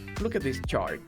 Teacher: Perceba que a entonação, olha só, está decrescente